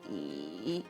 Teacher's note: And so it really sounds like a second tone, a rising tone. However, 以 remains a third tone with a very low creaky quality